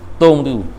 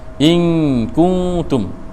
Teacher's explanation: In kuntum, kah depan bunyi ku, bila dengung bunyi kung, ta depan bunyi tu. Bila mati bunyi tum, jangan tom. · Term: baris depan